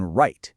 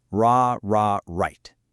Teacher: But for the R sound, like in right, your tongue pulls back and doesn't touch anything at all. It just kind of curls in the middle of your mouth.